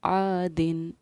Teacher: आदिन के दिन के नून पर हमने किसी तरह का कोई भी ठहराव नहीं किया, ना इख्फ़ा किया ना गुन्ना किया · तो जब हुरूफ़ हल्क़ी आएंगे तनवीन या नून साकिन के बाद, तो उस पर हम तनवीन और नून साकिन के नून को ज़ाहिर करके पढ़ते हैं, ना हम इख्फ़ा करते हैं ना गुन्ना करते हैं, किसी तरह का कोई ठहराव नहीं करते, बल्कि सिंपल नून को ज़ाहिर करते हैं